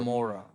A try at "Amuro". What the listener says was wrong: it's an O at the end.